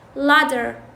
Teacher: يعني يلفظوها مثل الداء، يعني هذه صوت التاء يلفظوه مثل الداء. مثلا هسه عندكم latter وكلمة latter اللي هي بالأمريكي يقولون latter أو أصلا يعني وكلمة ladder و ladder لأن ماكو اختلاف بيناتهم بالأمريكي. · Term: فلاب تاء